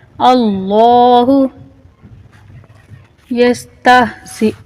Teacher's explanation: لفظ اللہ کو یہاں موٹا کر کے پر کر کے پڑھیں گے